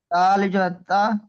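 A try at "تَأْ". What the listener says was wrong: তা, উপরে দেখেন হামজা আছে, হামজা যুক্ত আলিফকে ঝাটকা দিয়ে পড়তে হবে। তা,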